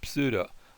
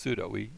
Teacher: So go ahead and have the PS sound, pseudo. But when we say the word in English, it's just pseudo. The P goes silent.